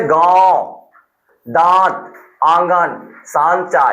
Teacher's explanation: तो ऐसे स्वरों का उच्चारण नाक और मुंह से होता है। ऐसे स्वरों का उच्चारण अनुनासिक का नाक और मुंह दोनों से हो जाता है